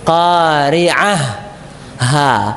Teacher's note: Jadi tak marbutohnya menjadi ha.